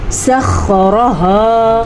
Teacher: خوا جو ہے اس کو حلق سے نکالنا ہے اور پر پڑھنا ہے. را کو ہم نے پر پڑھنا ہے.